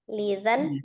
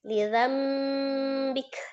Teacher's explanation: Bunyi nun sukunnya menjadi mim sukun gitu ya. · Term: iklab